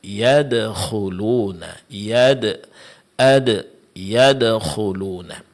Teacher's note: huruf yang diqalqalakan, di sini hanya ada satu contoh, yaitu huruf dal ketika sukun